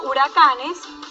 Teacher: nuestro acento lo encontramos en la penúltima sílaba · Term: palabras graves